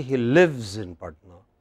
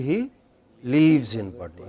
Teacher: many of us in India you know do not distinguish between short and long vowel sounds